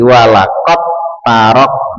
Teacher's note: di dalnya itu tidak dibaca tapi langsung masuk ke huruf ta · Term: idgham mutajanisain